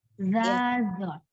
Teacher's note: Dia sama-sama jelas ya, hurufnya sama-sama jelas, tidak ada hembusan nafasnya. Tapi dia sama-sama lembut.